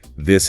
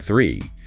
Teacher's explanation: the voiced and unvoiced th sounds in this and three